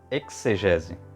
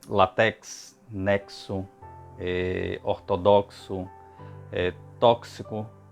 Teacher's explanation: Outros minuciosos defendem a fala como exegese, né, com fonema KS